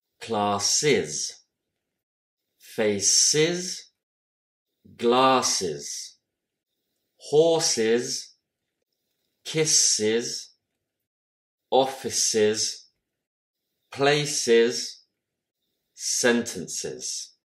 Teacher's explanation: la terminaison plurielle S se prononce avec une syllabe supplémentaire, semblable à is